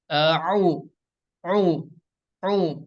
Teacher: huruf ain ini makhrajnya enggak keluar dari hidung gitu, enggak keluar dari rongga hidung. Yang benar itu adalah dari tengah tenggorokan atau wastul halki.